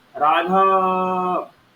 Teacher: राघव में र में आ तो दीर्घ है लेकिन घ में जो आ था उसको आपने इतनी देर क्यों खींचा तो वो क्या बन गया वह प्लुत बन गया जब हम किसी को दूर से बुलाते हैं